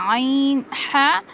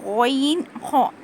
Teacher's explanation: اور حلق کے اوپر والے حصے سے غین اور خو ادا کریں گے